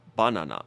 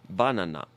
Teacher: we actually changed the vowel twice but in Japanese it's always ah